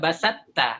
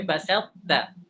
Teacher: sisa to-nya masih ada, tebalnya masih ada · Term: idgham naqis